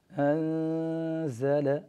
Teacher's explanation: ونعطي الزاي حقه فنعطيه جميع الصفات الواردة فيه وخاصة صفة الجهر، ولكن نحذر كل الحذر من تشديده ، نحذر كل الحذر من أن نقول مثلا أنزل هذا خطأ،